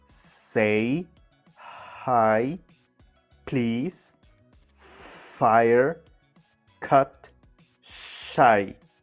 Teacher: the first sound in every word is voiceless